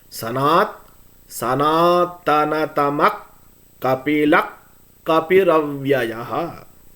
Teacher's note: Since the visargam is followed by ka in both the words, you have to hold with ik.